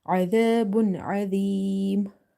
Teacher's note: Ain from the middle of the throat. Alif is madda.